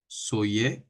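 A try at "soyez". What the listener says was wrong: সইয়ে না, এটা সোয়াইয়ে। হ্যাঁ, ওয়াইটা স্পষ্ট উচ্চারণ হবে, সোয়াইয়ে, ওয়াই এর মতো ইংরেজিতে উচ্চারণ করতে হবে।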